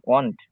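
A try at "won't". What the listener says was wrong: হ্যাঁ, উইল, ওন্ট, ওয়ান্ট না, ওন্ট, ওন্ট। হুম, একটা হচ্ছে উইল, আর একটা হচ্ছে ওন্ট। উইল, ওন্ট।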